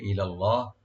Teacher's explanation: ইলাল্লাহ, ইলাল্লাহ, ই হামজা লাম ওপেন রাখবেন, লফজ জালাল এখানে মোটা হবে, ডিপ হবে